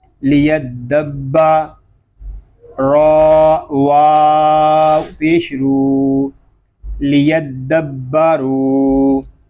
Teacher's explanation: دال مشدد میں کلکلا جماؤ کے ساتھ، با مشدد میں کلکلا جماؤ کے ساتھ